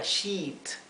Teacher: sheet, con una I, como si fuera una I larga